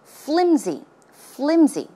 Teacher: it's not pronounced with an S sound but it's closer to a z z sound flimsy flimsy okay now flimsy means the very opposite of firm